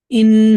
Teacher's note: نون پر ہم غنہ کریں گے اور الف مدہ کریں گے